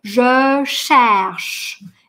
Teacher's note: Ну, среднее между «ше» и «ще» такое очень шипящее. «Je», трубочка, «je cherche».